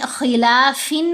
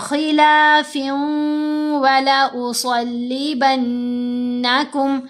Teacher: 2 حرکات کی مقدار ہم نے آواز کو لمبا کرنا ہوتا ہے ناک میں پڑھتے ہوئے · ہم نے خلافن نہیں پڑھنا، فا کو واو سے ملائیں گے اور ساتھ غنہ بھی کریں گے